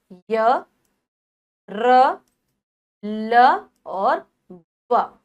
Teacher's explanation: हमारी जो जीभ है हल्की सी ऊपर जाती है, पूरी तरीके से किसी भी भाग को स्पर्श नहीं करती। ये बीच में स्थित होते हैं, इसीलिए इनको अंतःस्थ व्यंजन कहा जाता है।